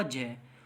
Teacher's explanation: जय में आपको ज़्यादा हवा नहीं निकलेगी मुंह से, चाहे आप मुंह से बोलकर देख सकते हैं। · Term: अल्पप्राण